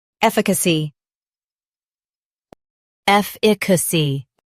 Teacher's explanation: In US, stress EF. In UK, IH.